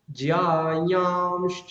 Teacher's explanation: ইয়াটাকে নাক দিয়ে উচ্চারণ করে, এটা উচিত কিরকম, জ্যায়াংশ্চ এরকম উচিত, কিন্তু আমরা সেটা অনেক সময় কষ্ট হয় বলে আমরা কি করি, জ্যায়াংশ্চ, ম হালকা করে একটা স্লাইড ম শোনা যাবে ওখানে, ক্লিয়ার।